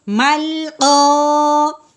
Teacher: لام حرف قلقلہ نہیں ہے، اس کو اب ہم نے ہلانا بھی نہیں ہے. مل ایسے نہیں کرنا.